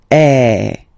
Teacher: So it's really open. I mean, the sound is really open, and normally your mouth should be opened a little bit more than with the accent aigu as well. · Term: accent grave